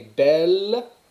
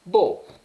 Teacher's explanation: Vous avez belle, hein, prononciation de L finale, alors que dans la forme masculine, vous avez beau.